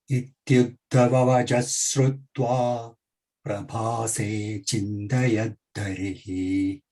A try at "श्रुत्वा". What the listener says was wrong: That shrutva's sh, let it have power. Not shrutva, shrutva, sh, sh sound, let it come.